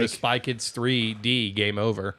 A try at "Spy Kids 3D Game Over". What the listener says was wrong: Yeah, it sounded like you almost forgot the D there.